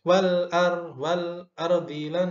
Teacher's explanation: ra sukunnya, takrirnya harus jelas, jangan terburu-buru.